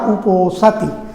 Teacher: ओसति सीधे जुड़ जाएगा, उप का आकार हट जाएगा, उसका लोप हो जाएगा और बन जाएगा उपोसति। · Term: पर रूप संधि